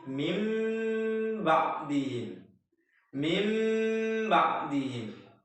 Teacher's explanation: kita merubah huruf nun sukun atau tanwin yang bunyinya tadinya n menjadi bunyi mim sukun dan disertai dengan dengung. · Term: iqlab